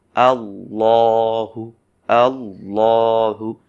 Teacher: কিন্তু আল্লাহ শব্দের লামে যেহেতু এখানে জবর পেয়েছে, সেজন্য জবর রয়েছে, সেজন্য আমরা বলবো আল্লাহু, আল্লাহু। অর্থাৎ জবর থাকার কারণে এই লামটাকে আমরা ল একটু মানে মোটা ভার করে পড়বো